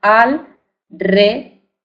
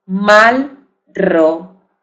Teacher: tiene el sonido vibrante de R detrás de cualquier otra consonante, que pertenece a otra sílaba